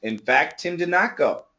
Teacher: if you listen carefully, it sounds like there is no T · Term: connect the T's